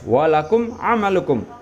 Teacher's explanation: Idhar syafawi. Idhar itu adalah jelas, ya. Artinya apa? Mim sukunnya dibaca jelas.